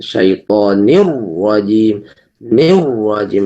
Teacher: enggak boleh terlalu banyak getar, langsung dibaca tebal